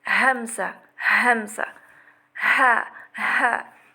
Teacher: du point de sortie du fond de la gorge, on a aqsa al-halq. Donc c'est la région située au niveau du larynx. Et deux lettres sortent de ce point.